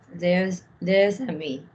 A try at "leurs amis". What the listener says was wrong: Lovely. Now do the link. Leurs amis.